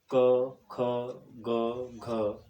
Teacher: जब जिह्वा का पृष्ठ भाग दोनों कोरों से कोमल तालु को स्पर्श करता है तब क, ख, ग, घ ध्वनियों का निर्माण होता है। इसे कोमल तालव्य भी कहा जाता है।